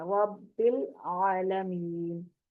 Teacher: लाम को पकड़ के रखना है, बिल करेंगे तो कलकला हो जाएगा, इसलिए छोड़ना नहीं है। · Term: लाम साकिन